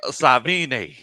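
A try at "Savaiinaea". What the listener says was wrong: I think you might be bleeding a syllable out or two.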